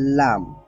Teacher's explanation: লাম উচ্চারণ করার সময় আমাদের জিহ্বার অগ্রভাগটা সামনের উপরের যে 8টা দাঁত আছে এই 8টা দাঁতের গোড়ালির সাথে লাগবে